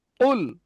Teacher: একদম জবানের শেষ, অর্থাৎ জিভের গোড়া দিয়ে উপরে তালুর সঙ্গে ঠেকিয়ে কফ উচ্চারণ হয় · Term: বড় কফ